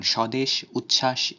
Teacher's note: বফলার উচ্চারণ শব্দের শুরুতে বা যুক্ত ব্যঞ্জন বর্ণের সাথে যুক্ত থাকলে কোনো উচ্চারণ হয় না